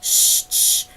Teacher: Basically, there's no voice. It's just the sound, air being pushed through your mouth, and they're fricatives.